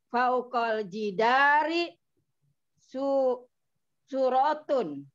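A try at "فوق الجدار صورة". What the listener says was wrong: Suratun. Nah, suratun gitu. Masih terasa belum mantap betul nih. Padahal ini panjangnya di su. Ada sod diikuti wawu temenan, jadi biasa kalau ketemu temen agak lama dia, nggak buru-buru. As-suratu. Nah, gitu. As-suratu.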